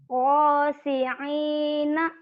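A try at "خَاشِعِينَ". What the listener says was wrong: Bukan go tapi kho. Khosyi'in.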